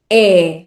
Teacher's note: Nesta palavra, a letra E, que também pode levantar algumas dúvidas, é pronunciada com o seu som mais aberto.